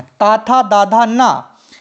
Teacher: जीभ ऊपरी दांतों को स्पर्श करती है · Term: दंत्य